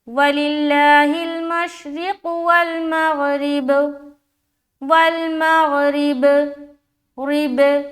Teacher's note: اگر ہم یہاں پر اسٹاپ ہوتے ہیں تو آپ با کا پیش کو ہٹا کر یہاں پر سکون لائیں گے, اور سکون کی حالت میں اگر ہم اسٹاپ ہو رہے ہیں تو با میں قلقلہ ہوگا